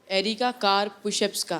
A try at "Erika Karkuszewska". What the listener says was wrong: मैं कहा एरिका कार एंड पुशअप्स, तुमने बीच वाला खा लिया।